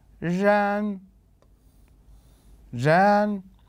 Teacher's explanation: النغمة الثانية أنه كان في صعود إلى الأعلى